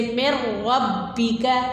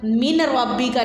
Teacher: نون کی آواز کو ظاہر نہیں کرنا، نون کی آواز کو مدغم کرنا ہے